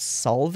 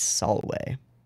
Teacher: there is no w in latin the v is the w so v's in words are w's